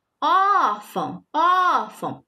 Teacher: A gente percebe que o O, ele saiu mais acentuado o som, né? Ele se prolongou um pouco mais o som, certo? Por isso que ele é mais forte. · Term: sílaba tônica